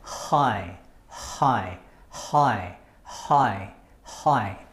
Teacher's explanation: use this part okay our throat to make that sound okay your lips are open your tongues they're not touching the top of our mouth your airways are fully open and you just let the air out